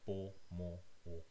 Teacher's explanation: All the air comes out of your mouth. This is an oral vowel